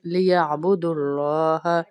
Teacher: अल्लाह के लाम को मोटा करके पढ़ेंगे क्योंकि इससे पहले पेश आ रहा है।